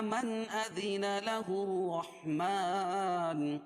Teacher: نون ساکن کے بعد حروف حلقی کے 6 حرفوں میں سے حمزہ ہے، اس لیے اظہار حلقی ہوگا، اس کو ظاہر کر کے پڑھیں گے